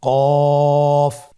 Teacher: কফের মাখরাজ হলো জিহ্বার গোড়া তার বরাবর উপরে তালুর সঙ্গে লাগিয়ে উচ্চারিত হয়।